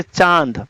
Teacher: अनुनासिक होता है इसका उच्चारण नाक और गले दोनों से होता है